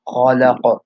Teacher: And the qaf has qalqala, and so you bounce. You want to make sure to make that bounce.